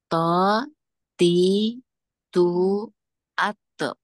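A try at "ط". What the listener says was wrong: Nah, sekarang Umi tebalkan pengucapannya, jangan po, ti, tu, itu nggak mengangkat pangkal lidah, tapi po, po, angkat pangkal lidahnya supaya tebal bunyinya po, ti, tu, ato.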